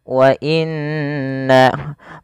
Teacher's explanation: ada yang Nun berharakat tasdid harus ditahan suara nunnya karena dia hukumnya ada bacaan gunah